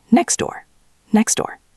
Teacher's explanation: So in natural speech, we just delete the t.